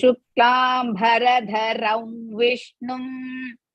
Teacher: Shuklam Bharadha, dha is Mahaprana.